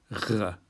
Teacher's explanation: So the tongue goes to the back of the mouth to make the G sound, G, but then you breathe through it, R, and you end up with this sort of rather messy noise from the back of the mouth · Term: aspirated Gimel